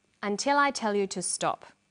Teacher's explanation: Did you hear the falling tone at the end?